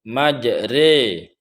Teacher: Imalah secara bahasa cenderung atau belok, namun dalam istilah qiraah ilmu tajwid, imalah berarti sedikit membunyikan fathah ke arah kasrah. Artinya setengah kasrah dan setengah fathah, sehingga bunyinya menjadi e. · ra yang berharkat fathah di sini tidak lagi dibaca ro, melainkan dibaca seperti orang yang mengucapkan kalimat sate.